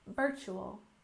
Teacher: with a stress on the first syllable in Virtual